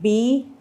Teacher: और ये कॉन्सोनेंट्स जब भी आप बोलेंगे तो आप फ़र्क ये देखेंगे कि जितने सारे कॉन्सोनेंट्स हैं सब में आपके मुंह में एक कांटेक्ट हो रहा है। जैसे बी आप देखेंगे दोनों होंठ मिल रहे हैं